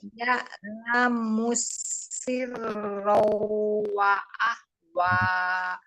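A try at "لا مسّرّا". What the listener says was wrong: Jangan ro wah. Ro-nya pendek, wanya juga pendek. Siro wa siro saja. Siro tasdidnya ro bukan waw.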